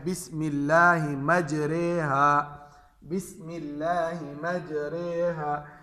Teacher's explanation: زبر کی آواز ہے وہ زیر کی طرف ہم کھینچے اس کو، اور الف کی آواز کو یا کی طرف کھینچے